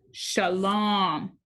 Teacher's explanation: That's a long O sound, like home.